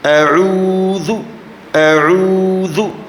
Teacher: عین کی آواز عین، حمزہ اعوذ. ذال زبان کا سر اوپر دانتوں کے ساتھ